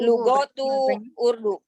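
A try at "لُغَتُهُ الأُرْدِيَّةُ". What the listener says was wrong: Lugotuhu ada hu-nya, idhofah.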